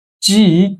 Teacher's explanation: And the second tone is a rising tone.